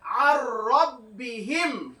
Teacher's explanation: ইদগামে তামের অক্ষর আছে র যার জন্য নুনটা বাদ দিয়ে দেব নুনটা বাদ দিয়ে দেব আর আইনের সঙ্গে রটা যুক্ত করে পড়বো কিন্তু গুণনা করা এখানে যাবে না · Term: ইদগামের কায়দা